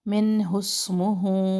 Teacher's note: نون ساکن کے بعد ہا اظہار کر رہے ہیں ، من حسمہ، اگر من پہ رک گئے تو اسمہ پڑھیں